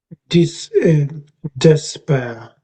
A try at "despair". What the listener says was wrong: You've got a slight gap between the two sort of sounds. You're saying des and then pair sort of thing.